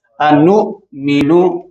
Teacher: حمزہ جھٹکے سے پڑھا جاتا ہے، انو مینو. میم میں یہاں الف خالی، الف سے پہلے زبر، یہ پیچھے لفظ گزرا، یہاں اوپر بھی کما، اور حمزہ دوسرے لفظ کا حصہ ہے، دوسرے لفظ کا حصہ ہے، مد منفصل کہلائے گی.